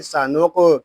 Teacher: سا، نون قاف پیش نوق، سانوق، یہاں قاف پر پڑھیں گے، قاف حروف مستعلیہ میں حروف قلقلہ میں سے بھی ہے، اس کو ہم قلقلے کے ساتھ پڑھیں گے